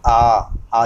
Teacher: तो जिन स्वरों के उच्चारण में मुख अधिक खुलता है वह विवृत स्वर कहलाते हैं। जैसे कि आ जब आ का उच्चारण जब हम करेंगे तो लगभग हमारा पूरा ही मुख खुला रहता है। और अगला जो वर्गीकरण है इसका वो है अर्धविवृत स्वर।